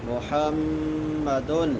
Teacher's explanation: ما کانا، ما میم کے بعد الف مدہ ہے، کانا کاف کے بعد بھی الف مدہ ہے، دونوں کو ایک الف کے برابر لمبا کریں گے۔ محمد میم مشدد ہے، غنہ ہوگا